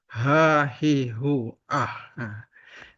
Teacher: Ha ini makhrajnya lewat kerongkongan halq halqiah bagian bawah